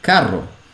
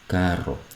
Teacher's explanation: have the trilled R, the ra, which many people have trouble with